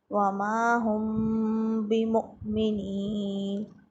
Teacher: میم ساکن کے بعد با آئے تو غنّہ کے ساتھ اخفاء کریں گے، اس کو اخفاء شفوی کہتے ہیں۔